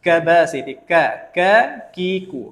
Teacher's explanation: Huruf kaf ni sebutannya jangan berangin. Kita tak nak ada angin.